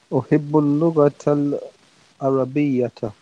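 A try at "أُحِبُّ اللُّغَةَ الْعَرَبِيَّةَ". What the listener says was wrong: Very good. Uhibbu al-lughata al-arabiyyata. Yes, well done.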